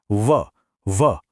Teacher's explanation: व को दंतोष्ठ कहते हैं। क्यों? क्योंकि इसे बोलने में दांत और होंठ दोनों का इस्तेमाल होता है।